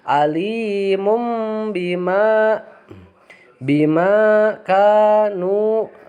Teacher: bunyi tanwin itu harus diganti dengan bunyi mim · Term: iqlab